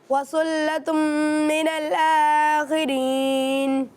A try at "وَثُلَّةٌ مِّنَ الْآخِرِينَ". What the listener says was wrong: माशाल्लाह बहुत अच्छी कोशिश की आपने, लेकिन सा में थोड़ी सी सीटी की आवाज़ आ रही थी, इसका आपने ख्याल रखना है, इसके लिए आपको प्रैक्टिस करनी है, ठीक है।